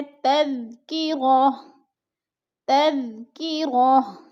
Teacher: دو پیش تنوین کو ہم نے وقف کی صورت میں تذکرۃن نہیں پڑھنا، بلکہ اس کو پڑھنا ہے تذکرہ